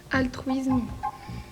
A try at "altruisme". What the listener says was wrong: Oui, c'était altruisme. Un S avant une consonne se prononce S et non Z. Je crois qu'on a répondu Z des deux côtés.